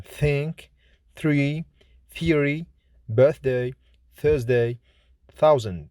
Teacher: Th is voiceless, fortis, dental, fricative consonant, like in think, three, theory, birthday, Thursday, thousand.